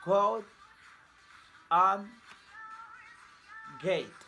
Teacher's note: Manner of articulation, place of articulation, velar. Manner of articulation, stop or plosive. Voicing, voiced.